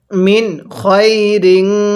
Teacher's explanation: এই নুন সাকিনের পরে খটি হলো ইজহারে হরফ এজন্য আমরা নুন সাকিনটা স্পষ্ট করে পড়বো